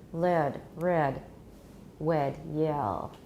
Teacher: All these voiced approximants have formants not unlike those of vowels.